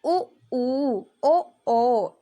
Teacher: इसको जब हम बोलेंगे तो हमारा पूरा होठ कैसा हो जाएगा, गोल हो जाएगा। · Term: व्रतमुखी